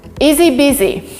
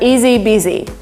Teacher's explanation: But we actually omitted sound H and we have easy busy.